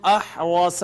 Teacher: را مفتوح ہے اس وجہ سے اس کو مفخم پڑھیں گے